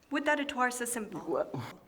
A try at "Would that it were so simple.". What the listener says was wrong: Why do you say twar?